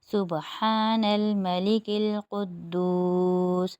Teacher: قدوس میں دال کے اوپر تشدید ہے، یہاں پر جماؤ پڑیں گے، اور دال اور واو مل کر واو مدہ بن رہا ہے تو یہاں پر بھی ایک الف کی مقدار کھینچیں گے